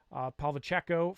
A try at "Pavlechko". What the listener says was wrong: Isn't it Pavlechko? You always want to go Pavlichenko, or I think you're adding syllables in there. I would say Pavlechko.